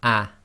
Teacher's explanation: the sound preceding it, in this case the ah sound, is going to be cut short because the Hamza is the glottal stop. So normally this Hamza on top of the Alif with the Fatha would be ah.